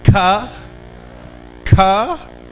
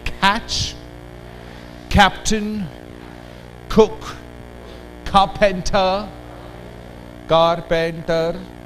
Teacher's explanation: In English, the back of the tongue and the soft palate makes the contact, and the sound articulated is ka.